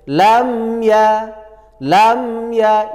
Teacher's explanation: lam ya izhar syafawi yaitu harus jelas pada ee bibir kita izhar syafawi dibaca jelas lam ya tidak boleh dengung